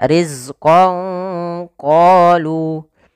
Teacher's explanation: Maka samarkanlah suara nunnya kepada huruf qaf.